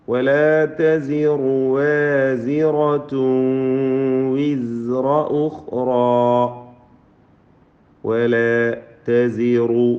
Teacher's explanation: ولا تزر റായിന് തഫ്ഖീമാണ്.